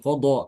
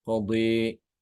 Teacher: tidak mengucapkan Qada tapi qodi dengan imalah